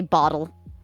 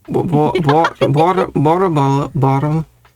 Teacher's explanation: We don't have T's. We say bottle. There is no T. It's a D. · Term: American bottle